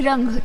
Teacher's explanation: हवा मुख और नाक दोनों में एक साथ निकलते है किंतु अनुस्वार के उच्चारण के समय हवा सिर्फ नाक से निकलते है